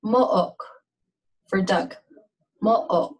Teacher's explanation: It sounds like a catch or an abrupt stoppage of air in your throat, and it separates two vowels, like an uh-oh. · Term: glottal stop